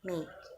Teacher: Each symbol presents one and only one sound, and with two dots after it is a long AH sound, as in our first word, mark. The vowel sound of make is actually a double vowel or diphthong, make, and is represented by composite symbols make.